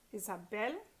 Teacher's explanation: Isabel ends in a consonant other than N or S. Isabel, last syllable.